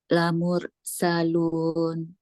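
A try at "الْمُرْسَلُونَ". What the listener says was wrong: masih putus ulang lagi sambungin lagi suaranya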